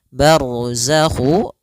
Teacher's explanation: ro tebal karena ada huruf ro yang sukun didahului dengan fathah · Kemudian pada lafal ma ada mad tabi'i, yaitu adanya fathah bertemu alif, panjangnya 2 harokat. Barzakhu, ra tebal karena ada huruf ra yang sukun didahului dengan fathah